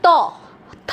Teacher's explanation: দেখো জিভটা গিয়ে দাঁতের ওপরের দাঁতের পিছনে লাগছে, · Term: দন্তধ্বনি